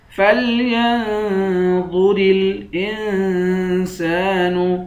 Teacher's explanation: حمزے کو نون سے ملا کر نون پر اخفا کریں گے، سین کے بعد الف ہے، الف حروف مدہ ہے، اس کو 1 الف کی مقدار کھینچ کر پڑھیں گے۔